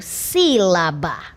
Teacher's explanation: a palavra sílaba tem como sílaba tônica a antepenúltima sílaba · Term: proparoxítona